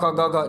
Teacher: जिह्वा मूले तु कह प्रोक्तः अर्थात क वर्ग जो समस्त क ख ग घ, जो ये क वर्ग है इसका उच्चारण जिह्वा मूल से होता है